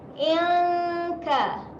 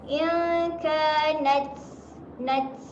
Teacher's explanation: Dengung sedia nak sebut huruf kaf. Dengung dekat tempat makhraj huruf kaf.